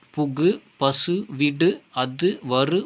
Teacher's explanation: தனிக்குறில் எழுத்தை அடுத்து வரும் வல்லின உகரங்கள் ஒரு மாத்திரை அளவு முழுமையாக ஒலிக்கும். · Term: முற்றிய லுகரம்